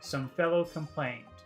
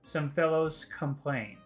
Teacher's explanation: if I said fellows, the next word is complained, and the S and the K sound would combine, and it would be some fellows complained, scomplained, scomplained.